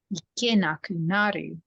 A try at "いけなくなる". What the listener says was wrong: You're stressing on いけなくなる。Just the なる。Exactly.